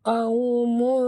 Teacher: kita kena dengung tebal kerana tanwin ini bertemu dengan huruf isti'la. Huruf ta adalah huruf isti'la, ya, jadi tebal, ya.